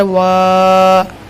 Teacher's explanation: अलिफ मद्दा को एक अलिफ बराबर खींच कर पढ़ेंगे